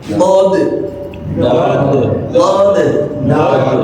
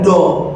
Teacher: sisi lidah ketemu geraham, sisi lidah nempel ke geraham